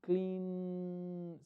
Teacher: Clean termina un voice Sound Clean si lo puedo alargar Y puedo sentir la vibración